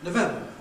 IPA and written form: nəˈvembə (November)